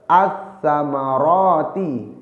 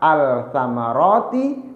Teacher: bukan al-samarati tapi as-samarati, diidghamkan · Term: idgham syamsiyah